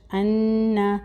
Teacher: غنہ ہو رہا ہے، نون مشدد ہے، غنہ کا ڈیوریشن ایک الف کے برابر